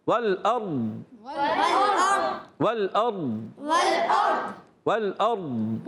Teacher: بعض بچے پڑھتے ہیں والارض، غلط. ضاد میں تو کلکلا بھی نہیں ہوتا اور ڈال بھی نہیں ہوتا